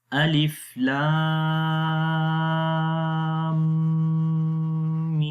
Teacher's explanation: you will join your lips together strongly and you will hold your sound for a while into your nose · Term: gunna